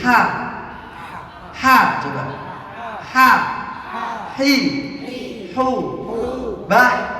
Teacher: huruf H di tengah tenggorokan, bagian tengah tenggorokan, bersih.